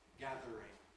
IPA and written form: ˈgæðr̩ɪŋ (Gathering)